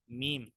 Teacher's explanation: मीम, दोनों होठों के खुश्क हिस्से से